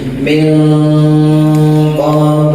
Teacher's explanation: nun mati menghadapi qof ditahan samar-samar ya ikhfa namanya